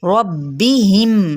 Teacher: रॉ पुर पड़ा जाएगा और रॉ को बा के साथ मिलाएंगे